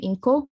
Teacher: the morpheme inko, water, which surfaces with epenthesis in isolation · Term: word initial E epenthesis